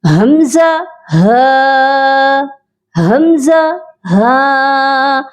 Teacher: جب ہم ان کو پروناؤنس کرتے ہیں حمزہ ہا، ان کی ادائیگی کرتے ہیں تو یہ حلق کے سب سے نیچے والے حصے سے نکل کر آتے ہیں